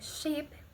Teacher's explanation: The tongue is placed just behind the alveolar ridge, in a region closer to the palate line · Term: Postalveolar